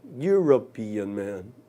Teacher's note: Essa junção do E com o U dá ao E o som do Y